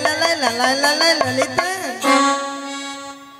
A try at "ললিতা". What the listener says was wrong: নাকি লালাই লালাই লালাই লালাই ললয় ললয় ললিতা? মাসি, ওটা লালাই লালাইও নয়, আর ললয় ললয়ও নয়, বলো ললিতা।